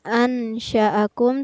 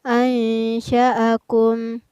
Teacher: Ada nun sukun yang bertemu dengan huruf shin, maka nun sukunnya dibaca samar, bukan ansha'akum tetapi ansha'akum. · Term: hukum bacaan ikhfa